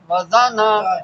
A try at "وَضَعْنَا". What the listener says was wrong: وضعنا وضعنا عین کو واضح کرنا ہے